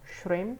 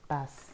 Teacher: Apalagi misalnya shrimp ada p-nya jadi shrimp, p-nya hilang.